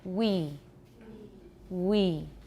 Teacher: say it a few times so you can really feel it the back of your tongue is rising and becoming tense your lips are becoming rounded and tensed